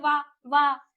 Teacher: व जो हमारे दांत है वो हमारे हंठ को टच कर रहे हैं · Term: दंतोष्ठ, दंत प्लस ओठ